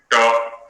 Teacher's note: जैसे हम ट बोलेंगे, ट, तो जिह्वा का जो अग्रभाग है एकदम 90 डिग्री पर खड़ा होकर के ऊपर स्पर्श करता है